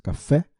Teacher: a última sílaba pronunciada com força, café, e acentuada graficamente.